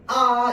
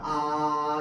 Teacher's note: 아라고 하는 이 발음은 내가 처음 입을 벌리는 순간부터 소리를 끝까지 그만 낼 수 있는 데까지 낼 때까지 모양이 똑같이 그대로 유지됩니다. 아 이렇게 유지됩니다. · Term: 단모음